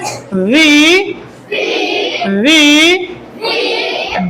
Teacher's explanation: উপরে দুইটা দাঁত, আমরা নিচের যে ঠোঁট আছে ঠোঁটের ভিতর দিকে ভিজা অংশের জায়গায় আমরা লাগাই দেব